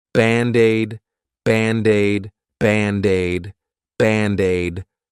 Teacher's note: to pronounce them like one, I'll take that D and transfer it to the vowel